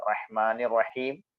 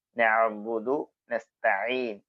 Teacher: ഹാ പറയുമ്പോൾ കാറ്റ് പുറത്തേക്ക് വരും ഐൻ പറയുമ്പോൾ കാറ്റ് പുറത്തേക്ക് വരില്ല